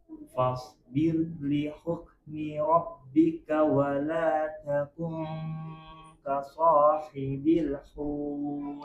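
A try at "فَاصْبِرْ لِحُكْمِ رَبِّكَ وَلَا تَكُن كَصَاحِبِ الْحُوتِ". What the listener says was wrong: Nah, ini tadi agak ada ekornya dikit. Ka sahibil hut. Bil ada le-nya ya.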